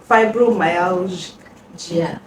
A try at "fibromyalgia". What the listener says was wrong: It's not gear, it's like saying gesture. You're still saying gear.